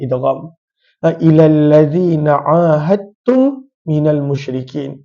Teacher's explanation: kita tak baca Dal kita terus baca huruf ta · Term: idgham